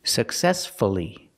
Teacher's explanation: stress is on the second syllable so we pronounce the U